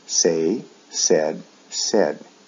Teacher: The pronunciation is a short E sound, eh, said, in both the past and the past participle.